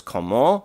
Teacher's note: we're extending the nasal when it doesn't come before a plosive, and the T is silent here, so we're just going to elongate the O, so it's comment.